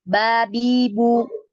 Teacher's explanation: bukan bo bo bacanya tapi ba ba bi bu datar